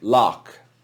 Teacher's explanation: because this word ends in ch it ends in ch but it's not pronounced like ch in church it's pronounced hard like a k